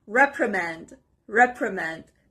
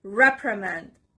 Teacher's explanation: The stress is on the first part